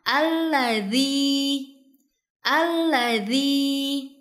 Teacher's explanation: Pertama di sini terdapat huruf dzal yang makhrajnya ada di ujung lidah bertemu dengan ujung gigi bagian atas